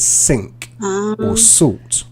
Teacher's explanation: with the th sound in think, thought, quite often it becomes a s sound. So it becomes sink or salt.